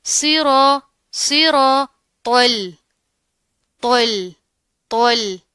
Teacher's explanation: اب اس تو کو جب ہم اسلام کے ساتھ ملائیں گے تو آپ نے اس چیز کا خیال رکھنا ہے کہ یہ جو تو ہے اس کو تو ہم موٹا پڑھیں گے، لیکن جو یہ لام ہے اس کو ہم باریک پڑھیں گے. اس کو آپ نے تو کے ساتھ ملا کر موٹا نہیں کرنا، ٹھیک ہے.